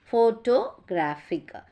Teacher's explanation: photographic is stressed on the third syllable